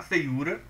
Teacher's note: Esse fei, a primeira sílaba, fei, tem um ditongo, logo depois vem o u tônico, ou seja, o u mais forte, como paroxítona, ou seja, a penúltima sílaba que é tônica.